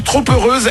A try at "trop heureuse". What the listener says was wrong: il y a un P à trop. On fait la liaison.